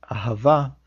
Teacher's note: the second Hey in the word ahava, which means love, serves as a vowel, and we don't hear any H sound